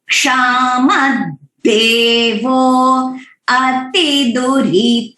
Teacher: अति जो है वो स्वरिता है और ह्रस्व मात्रा है, तो उसके हिसाब से हमें केयरफुली चांट करना है।